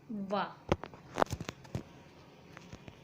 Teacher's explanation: दंतोष्ठ्य व्यंजन जो निचले होठ व ऊपरी दांतों से बोला जाता है